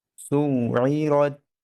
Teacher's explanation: শেষের তাটা যেন হামস হয়